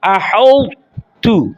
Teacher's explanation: اس کی کوئی نہ کوئی صفت باقی رہے، جیسے احوت، یعنی آپ نے تو کی جو موٹا ہونے کی صفت ہے وہ باقی رکھنی اور قلقلہ نہیں کرنا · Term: ادغام ناقص